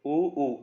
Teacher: फिर आप बोलो ऊ, इसमें क्या हुआ, जीभ पीछे चली गई, पश्च हो गया